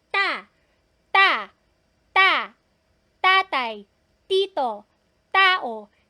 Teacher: hindi talaga gagalaw walang hangin na lumalabas kasi hindi siya aspirated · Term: double t